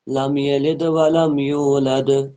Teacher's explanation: لم یلد، اب دال پہ جزم تو قلقلہ ہوگا